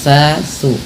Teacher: Ujung lidahnya, ujung lidah tempelkan dengan gigi sari atas sehingga sa su gitu ya.